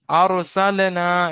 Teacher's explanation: র সাকিনের আগে জবার এসেছে তাই রকে পুর পড়তে হবে